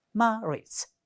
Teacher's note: The next word you do have is marriage, and if you look at this word, it has 2 syllables, and the first one is stressed.